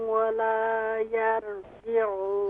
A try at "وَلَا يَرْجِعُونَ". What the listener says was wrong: हाँ, यर नहीं, यहाँ रॉ को हम फुल माउथ करेंगे, वला यरजिऊन।